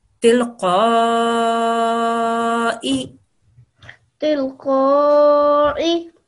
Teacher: Make sure it's a hamza sound and not an ayn sound